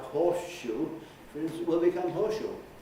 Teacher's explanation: And that esh that you had made out of the S that ended the word horse, for the moment you're saying horseshoe, you're pronouncing what corresponds to the letter S in the spelling of the word horse, you're pronouncing it as a sh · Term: assimilation